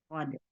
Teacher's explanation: huruf asli yang dibaca dengan ada kol-kolah di belakangnya